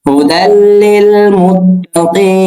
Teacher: যখন আমরা তেলাওয়াত করব তখন নুনের জবর উচ্চারণ করব না, মানে জবরের উচ্চারণ আনবো না, শুধুমাত্র নুনের উচ্চারণ আনবো